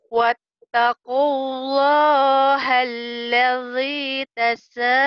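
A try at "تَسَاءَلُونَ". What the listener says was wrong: Itu alif loh, enggak perlu ke ain ya. Alun. Tasa'alun. Coba lagi.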